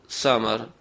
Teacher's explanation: آواز کو باریک کریں گے سیٹی کے ساتھ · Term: سین